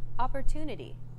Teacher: The stressed syllable to in opportunity is deemed more important, so it's pronounced longer than all other syllables.